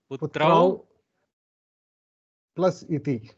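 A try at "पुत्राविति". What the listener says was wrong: Perfect. You got it.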